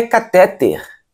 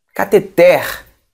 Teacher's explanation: Não é catéter. Então é uma palavra oxítona. A sílaba mais forte é a última.